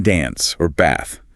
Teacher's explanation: a broader a sound like the a in father